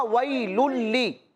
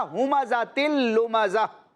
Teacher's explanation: और यहां भी हमने इदगाम करना है, یعنی تنوین کو لام کے ساتھ ملانا ہے لیکن غنہ نہیں کرنا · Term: ادغام